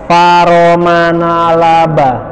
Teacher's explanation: Fa itu bibir, ro lidah, ujung lidah, ma bibir, na lidah, la lidah, ba bibir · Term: izlaq